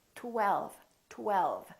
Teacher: And then the tongue goes up again for the L, l, l. And then the lower lip touches the upper teeth for the V